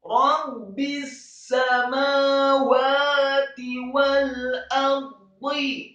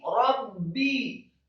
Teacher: Kemudian ayat yang selanjutnya, ayat ke-37, Rabbis samawati wal ardi. Rabbi, rohnya fathah tafkhim satu harokat, kemudian ba-nya ditasydidkan, dibaca tipis, kasroh satu harokat, setelah ba yang tasydid satu harokat, kemudian disambung ke huruf sin yang tasydid fathah satu harokat.